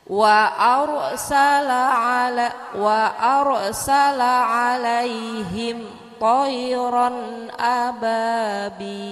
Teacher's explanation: Sama ro mati sebelum ada harokat fathah dibaca tafhim ya Bu ya, dibaca tebal.